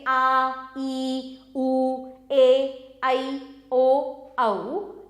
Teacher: इन वर्णों के उच्चारण में अधिक समय लगता है मतलब कि हस्व स्वर से अधिक समय लगता है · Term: दीर्घ स्वर